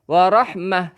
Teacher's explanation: Bila tak marbutah, kita berhenti bunyi ha, warahmah.